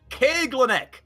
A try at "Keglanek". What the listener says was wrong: I got the emphasis on the wrong syllable.